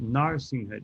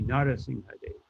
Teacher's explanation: You say all the syllables, although the last A is very faint